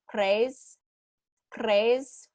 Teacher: sometimes it's more of a rolled r so like craze craze where the tongue is coming up and trilling on the roof of your mouth